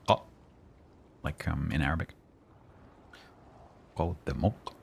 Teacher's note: And the k is like a glottal stop. K, like a k, like in Arabic.